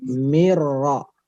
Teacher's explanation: Mirro, udah nggak ada nunnya ya, nggak ada nunnya, langsung ke ro ya. Mirro, ro tebal, ro tebal. Caranya angkat lidah belakang.